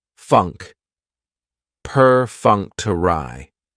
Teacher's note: Perfunctory has 4 syllables, and the stress is on that second syllable, that funk.